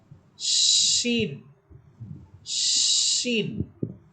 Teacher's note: শিন হরফটা আওয়াজটা অনেক বড় হবে, তিন আলিফ টানিয়া উচ্চারণ করতে হবে, অর্থাৎ শিন এভাবে শিন শিন।